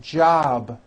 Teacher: job ends in a B which is a voiced sound job it's not jump with an unvoiced p keep the voicing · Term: voiced be ending